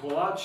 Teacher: ako se u Zagrebu kaže kolač, dakle, naglasak na drugom slogu, silinski naglasak, standardno je kolač, dakle, sa kratkouzlaznim iza naglasnom duljinom.